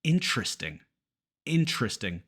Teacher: almost all Americans say interesting interesting dropping that first e occasionally you'll hear people pronounce it interes in instead without the